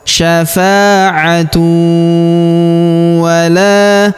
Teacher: Kemudian tanwin bertemu dengan huruf waw berharokat tasydid, maka tanwin unnya melebur ke huruf waw yang berharokat tasydid. Kita tahan dan kita tekan serta kita dengungkan 2-3 harokat.